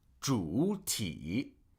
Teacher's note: For example, this word, 主体, if I had to pronounce both third tones completely, I would have to say 主体, which is more work than 主体, right? Because as the third tone falls, it then rises. So that first third tone, we just truncate the first part of it, right?